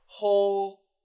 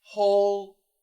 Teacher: that L and the D are basically the same position. So we want to go switch to a vibrated stop. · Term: dark L